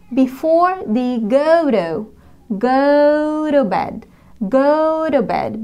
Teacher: هنا we have a vowel go ثم t ثم another vowel. إذن ال t ما بين حرفين متحركين يجب أن ننطقها flap t